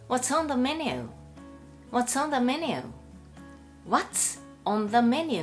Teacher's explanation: What's▁の▁TS▁と▁On▁がくっついて▁What's▁on▁のように連結してしまいます